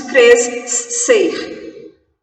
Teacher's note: Sonoramente, eu não preciso do S, preciso como letra, não preciso como som, é um dígrafo.